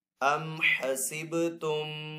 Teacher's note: با ساکن ہے، با ساکن کو پیچھے سین کے ساتھ ملا کر پڑھیں گے۔ با حروف کلکلہ میں سے، تو با کے اوپر یہاں پہ کلکلہ بھی کریں گے۔